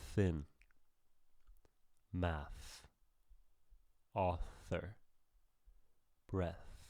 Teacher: Okay, for example, the first sound here is a voiceless sound. There's no vibration when I touch my throat. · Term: voiceless th, voiceless TH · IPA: /θ/